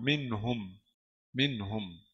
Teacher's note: Jadi di sini kita bilang nun sakinah mudharah qabla al-ha'il madmumah. Nun mati atau nun bersukun dijelas sebelum ha berharakat dhammah. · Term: izhar halqi